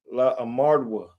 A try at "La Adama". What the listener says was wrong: There's no R in there. No, there's no R.